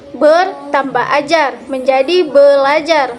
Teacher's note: ber tambah ajar menjadi belajar, di mana R berubah menjadi L. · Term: muncul bunyi baru